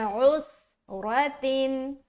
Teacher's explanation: उसके बाद उस, औस नहीं बोलना बल्कि उस आइन भी निकालना और सीन की अदायगी भी सही करना। आइन हलक से निकल के सीन में मिलेगा और जैसे ही सीन में मिलेगा यहाँ पर एक सीटी नुमा आवाज आएगी। तो हम पढ़ेंगे उस रातिन। · उस रा को मोटा रखना क्योंकि इसके ऊपर जबर है।